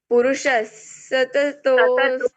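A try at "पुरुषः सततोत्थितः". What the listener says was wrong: अब यहां पर क्या हुआ सततोस उसके बदले करना है सततो त आधा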